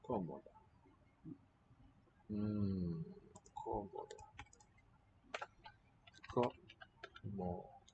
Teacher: accent mark shows it's not the middle syllable, not the usual one before the final, but the first here.